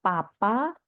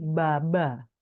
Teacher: Misalnya dia mau bilang papa ya dan betul jadi papa, tidak salah menjadi baba ya yang hanya berbeda pada voicing ya, pada suara ya. Peh beh itu kan semuanya sama tapi bedanya peh itu tidak bersuara, beh bersuara.